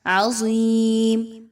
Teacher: ضا کو موٹا کر کے پڑھیں گے، حروف مستعلیہ میں سے ہے